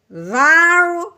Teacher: رو کو پر پڑھنا ہے پیچھے والے حرف کی زبر کی وجہ سے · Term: رو پر